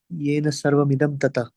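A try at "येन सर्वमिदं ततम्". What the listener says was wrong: ये न सर्वम, ततम नहीं, ततम है, ततः नहीं है, ततम है.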